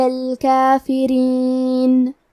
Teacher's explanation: را کے نیچے زیر ہے، تو یہاں را کا حکم ہے ترقیق، یہاں ہمیں حرف الرا کو پتلی آواز میں پڑھنا ہے